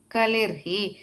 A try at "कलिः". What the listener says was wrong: The last sprudoh kalihi. Kalihi. No ir there, yeah. Ir goes away.